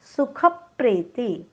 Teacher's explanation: ख वर आघात, डोक्यावर हलंत प, कारण पुढे जोडाक्षर काय आलेलं आहे प्र.